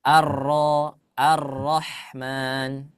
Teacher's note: ini adalah ee Syarah daripada Matan yang tadi salah satunya adalah Apabila ada huruf ro berharakat fathah maka dia selalu dibaca tebal